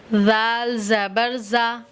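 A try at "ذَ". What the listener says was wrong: नहीं, ज़ाल ज़बर ज़ा, सॉफ्ट बिल्कुल।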